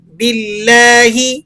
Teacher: لفظ اللہ سے پہلے حرف پر زیر ہو تو لفظ اللہ کو باریک کر کے پڑھتے ہیں.